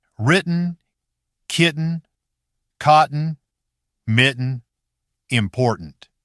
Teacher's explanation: But in fast speech, the throat takes over, a quick catch and release, instead of a tongue tip tap. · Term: glottal stop